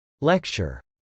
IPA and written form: lˈɛktʃɚ (lecture)